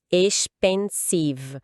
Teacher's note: Expensive. A sílaba tônica tá no meio, pen.